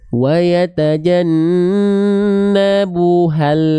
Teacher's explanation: makhraj lamnya lepas, langsung lafalkan huruf berikutnya di saat yang bersamaan. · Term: lam sukun